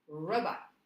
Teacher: when I put the stress on the first syllable, the second syllable gets softer and a little bit less pronounced.